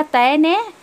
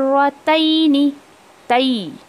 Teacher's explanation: ए की आवाज़ नहीं आनी चाहिए बल्कि ई की आवाज़ आनी चाहिए